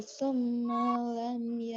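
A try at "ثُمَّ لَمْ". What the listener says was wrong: ma-nya jadi panjangin, jangan summa lam.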